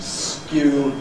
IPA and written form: skjuː (skew)